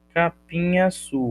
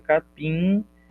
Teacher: Esse M nasaliza o I, fica capim, vogal nasal